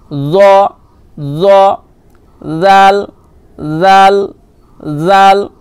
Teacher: জাল যখন উচ্চারণ করবেন জিভের আগা সামনের উপরের দুই দাঁতের আগার সাথে লাগাবেন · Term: জ জাল সা